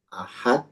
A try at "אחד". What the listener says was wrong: Ini bukan, bentar. Ini bacanya ehad, bukan ahad. Ehad.